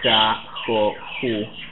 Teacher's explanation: This is a velar sound, for those who know what that means, and it depends on the vowel that comes after, but let's say that in Argentina you would say ja, jo, ju, and then je, ji. So ja, jo, ju is fully velar